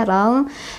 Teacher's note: kita bacanya tidak terlalu dekat ke n, tidak juga tidak terlalu dekat ke ang gitu ya. Jadi pertengahannya. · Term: ikhfa ausath